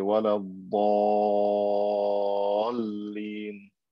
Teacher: I have to stretch it for three alifs or three times the length of natural mad and say, wala dhalin.